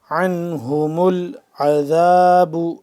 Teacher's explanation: زبر عن حلق کے درمیانی حصے سے عین ادا ہوگا عنہم یہ والا ہا حلق کے آخر والے حصے سے سینے کے قریب سے